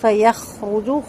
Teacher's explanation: خو پر ہوگا اور خو کی خرخراہٹ واضح ہوگی اور حرکات لمبی نہیں ہوں گی۔ منہ میں بھی نون ساکن